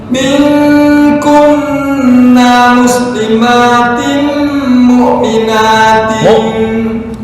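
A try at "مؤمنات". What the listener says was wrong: Bukan mu di tengah tenggorokan, ain itu. Nah, kalau ini hamzah tuh di yang dekat dengan dada. Saya nggak tahu ujung apa pangkal nih. Bukan mu. Nah, oke, mu'mina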